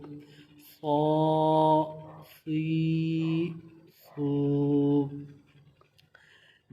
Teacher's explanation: صاد کو موٹا بھی پڑھیں گے اور اس میں سیٹی کی آواز بھی نکالیں گے